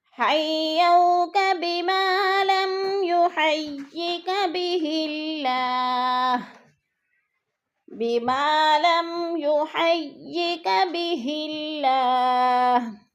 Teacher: بما پہ الف مدہ ہے، الف مدہ کو ایک الف 2 حرکات کے برابر لمبا کرنا ہے، اور بہ اللہ کی اللہ کو باریک پڑھیں گے. اللہ سے پہلے لفظ ہاں کے نیچے زیر ہے تو اللہ باریک پڑھا جائے گا، اس کو موٹا نہیں کریں گے.